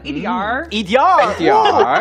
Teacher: It's just you roll your R's at the end. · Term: Beijing accent